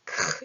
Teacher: 이 목구멍에서 나오는 히읗이 더 붙어진 소리예요. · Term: 거센 소리